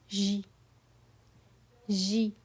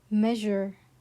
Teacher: With a soft vibrating sound like the middle of the English word measure.